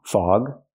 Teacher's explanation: We have to use the voiced g sound, fog, plus the voiced d sound, fogged up.